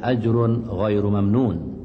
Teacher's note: Tanwin baris dua bertemu dengan huruf ghain, hukumnya izhar dan hendaklah dibunyikan tanpa dengung, dibaca dengan terang, jelas dan nyata.